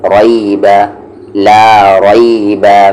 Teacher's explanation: را ہیوی ہوگا یہاں پر کیونکہ اس پہ زبر ہے، رئی، با پہ زبر با، ریب، لا ریب۔